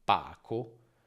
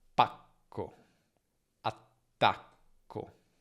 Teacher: nella doppia c'è una fase di chiusura più lunga e la prima vocale invece si accorcia. Pacco, attacco.